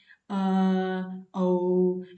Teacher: कंठ तो बोल ही रहा है औ, लेकिन होठों की भी हमको आकृति बनाना पड़ता है। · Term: कंठोष्ठम